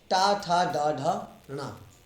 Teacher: हमारे मुख में एक स्थान है जिसका नाम है मूर्धा, जो कि तालु से ऊपर का भाग होता है। तो टवर्ग का उच्चारण मूर्धा स्थान से होता है, उसका उच्चारण स्थान मूर्धा है।